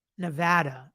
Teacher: put emphasis on the second syllable Nevada pronounce it so that the middle part rhymes with ADD